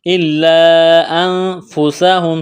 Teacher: نون ساکن کے بعد فا ہے، حروف اخفا ہے تو یہاں پر اخفا کریں گے، آواز ناک میں چھپائیں گے۔ الا انفسہم، سین میں سیٹی کی آواز پیدا کریں گے۔